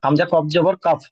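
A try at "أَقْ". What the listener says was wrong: কাব নয়, হামজা কফ জবর আক, আক আক, হামজার উচ্চারণ টানেন, হামজার উচ্চারণ কি হয়? হামজা জাবার আ উচ্চারণ হয়, হামজা জাবার আ উচ্চারণ হয়, তাহলে হামজা কফ জাবার আক, আক, তাহলে ওয়াল আক।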